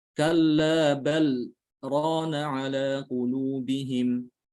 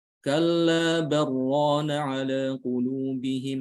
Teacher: Kita baca diidghamkan ke ra.